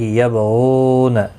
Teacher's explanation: غین مستعلیہ ہے، پر پڑھا جائے گا. غو واو مدہ ہے، ایک الف کی مقدار کے برابر کھینچ کر پڑھیں گے